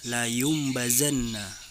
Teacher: apabila nun sukun atau tanwin bertemu dengan huruf ba maka bacaan nun sukun atau tanwin berubah menjadi Bunyi mim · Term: iqlab, iklab